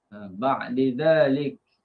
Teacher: masukkan dal dalam zal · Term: idgham kabir